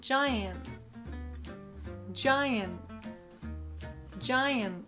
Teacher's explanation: A lot of times Americans won't release or aspirate their Ts at the ends of words. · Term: held T